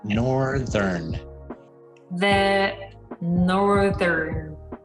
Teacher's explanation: we just go straight from the th sound to the r to the n